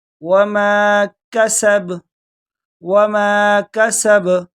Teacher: تو با پر بھی تھوڑا جھٹکے کے ساتھ پڑھیں گے کیونکہ یہ حروف قلقلہ میں سے ہے